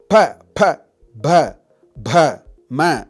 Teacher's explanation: unless you move your two lips, this sound will not come. That's why it's called Oshtav.